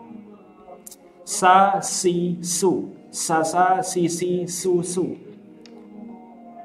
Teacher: Harus ada sifat sofirnya, berdesis, suara desis yang tajam.